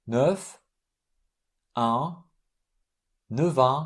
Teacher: F is pronounced V.